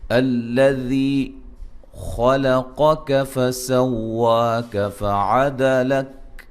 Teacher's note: جب شروع یہاں سے کرنا ہے تو الذی پڑھیں گے، الذی خلقک فسواک فعدلک، ذی یا مدہ ہے، خا کو موٹا ادا کریں گے، قاف کو موٹا ادا کریں گے